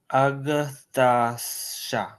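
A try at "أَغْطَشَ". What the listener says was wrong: Try to pronounce the ta stronger. Aghtasha. Aghtasha.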